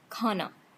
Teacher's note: this is stopped, voiceless, and aspirated.